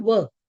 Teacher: Indian languages have, Gujarati, Hindi have the plosive ver. It is a soft plosive.